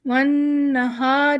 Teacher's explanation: نون پہ تشدید ہے تو ہم یہاں پہ غنہ دے رہے ہیں